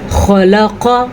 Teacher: خا کو پر، پھر قاف کو پر